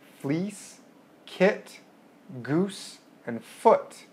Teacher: So aside from frontness, backness, you can also think about how high the vowel is, or how high your jaw is. So vowel sounds made with a high tongue position and with a high jaw include fleece, kit, goose, and foot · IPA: i ɪ u ʊ